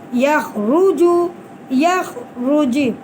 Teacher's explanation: را کے اوپر پیش ہے تو ہم را کو پر کر کے ہی پڑھ رہے ہیں